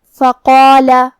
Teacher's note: تو ہم قاف کو اور مد الف کو دونوں کو بھاری آواز میں پڑھیں گے